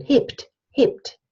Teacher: it's a consonant cluster at the end of a word, hebt. So the B becomes a P in pronunciation. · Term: final obstruent devoicing